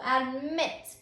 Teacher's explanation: So when you say the word admit, you can hear that the strongest syllable is on that last syllable, admit, before you add the suffix.